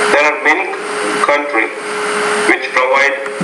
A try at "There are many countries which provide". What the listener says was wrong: Don't forget, there are many countries. You want to put the S on the end of countries and even pronounce it as a Z in that case.